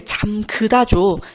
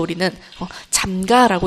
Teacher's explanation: 으 모음이 탈락하고 있다는 것을 알 수가 있습니다